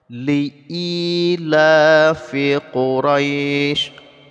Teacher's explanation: Ila ini panjangnya sama-sama 2 harokat, i 2 harokat, la juga 2 harokat. Keduanya adalah mad asli.